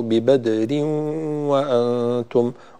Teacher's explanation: لابد من كسر الراء جيدا، كسرة التنوين وإدغام التنوين في الواو. ببدر وأنتم، ولا نقول ببدر وأنتم، بدر وخطأ، لأن الكسر لم يتم بشكل جيد. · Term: إدغام بغنة